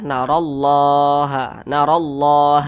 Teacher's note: Kemudian di sini ada Allah, ya, ada Allah. Kemudian di belakang daripada kata Allah ini ada huruf ro, dan ro ini berbaris ke atas, maka Allahnya ini dibaca tebal.